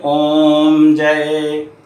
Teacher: प्लुत स्वर का प्रयोग किया जाता है, इसलिए इसको देर तक बोलते हैं